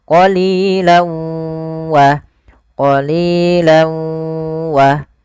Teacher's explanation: idgham bi gunnah yaitu masukkan tanwinnya ke huruf waw, awalnya qalilan, karena ketemu waw masuk ke huruf waw, tanwinnya menjadi qalilau.